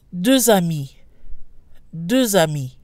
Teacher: no change when followed by a vowel the X is pronounced sounds like a Z this is again due to what's called liaison so it flows better so we have doors on me Durza